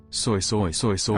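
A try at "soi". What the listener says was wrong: It's not supposed to sound like soy, it's supposed to sound like swa. It's meant to go swa, swa, swa, swa, swa, swa.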